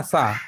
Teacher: सा आपका तालव्य में आता है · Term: तालव्य ध्वनि